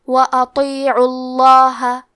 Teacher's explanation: کلمت وَأَطِيعُوا میں حرف الطو ہے، طو حروف التفخیم میں سے ہے تو ہم یہ حرف کو موٹی آواز میں پڑھیں گے۔ حرف العین پہ پیش ہے تو ہمیں لفظ الجلالہ مطلب کلمت اللہ کے لام کو موٹی آواز میں پڑھنا ہے۔